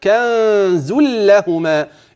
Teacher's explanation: الغنه الاخفاء في النون التي بعدها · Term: الغنة الإخفاء